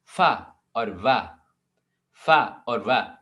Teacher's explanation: मेरे नीचे वाला होंठ जो है वो ऊपर के टीथ से मिल रहा है, फिर ये साउंड प्रोड्यूस हो रहा है, ठीक है। · these are sounds formed with the upper teeth and the lower lip. डेंटल कहते हैं टीथ को, लेबियो लिप्स को कहते हैं, ठीक है। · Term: लैबियोडेंटल्स